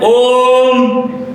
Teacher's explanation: जब हम बोल रहे हैं ओम तो हर स्वर और दीर्घ स्वर दोनों से अधिक समय ले रहा है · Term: पुलत स्वर